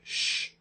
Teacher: she is voiceless because we can't feel the vibration it's an oral sound comes through our oral cavity